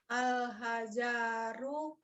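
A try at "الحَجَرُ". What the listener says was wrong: Nggak ada yang panjang. Al-hajaru.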